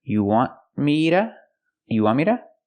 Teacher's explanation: It's a stop T, so you don't really hear it. You want, the tongue goes up and stops the air.